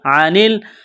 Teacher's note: گلے کے درمیان سے زور لگا کر عین کو نکالیں گے